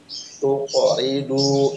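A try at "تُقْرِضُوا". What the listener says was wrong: Tuqo, jangan putus. Tuqridu. Nah, jangan tuqo, bukan tuqo. Tuqridu.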